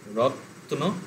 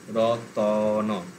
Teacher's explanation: ততে থেমে যাচ্ছিল, ওখানে তয়ের পরে একটা অ হলো, রত্ন র ত ন। দুটো সিলেবেল ছিল, তিনটে সিলেবেল হয়ে গেল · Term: স্বরভক্তি